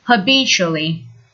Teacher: notice the pronunciation of the first adverb is habitually with the stress on the second syllable